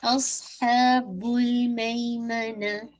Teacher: अस्हाबुल हा को 2 count with middle of throat से इंशाल्लाह, बुल इस पे बाउंस नहीं कीजिएगा, टाइम दीजिए लेकिन इसको बाउंस नहीं कीजिएगा